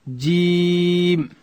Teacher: جیم ادا کیږي چې کله د ژبې منځ لوړ تالو ته ورپورته کو، دلته حرف جیم ادا کیږي.